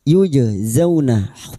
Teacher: Hal yujazawna, jim sukun qalqalah sugro, jim sukun yang mati asli di tengah kalimat qalqalah sugro, jangan lupa dipantulkan